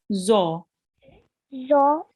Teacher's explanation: So it's a thick sounding letter, and we will read it with our mouth rounded a bit.